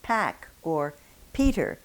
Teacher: When you say pack or Peter in English, there is a very noticeable puff of air that accompanies the P